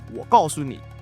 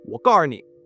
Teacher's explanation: completely taking out that su in 告诉 for R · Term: erhua